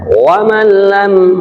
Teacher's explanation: Maksudnya idgham, suaranya non mati itu langsung kepada lam, bahkan tidak ada suara nunnya, karena seakan-akan lam bertasdid saja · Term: idgham bila hunnah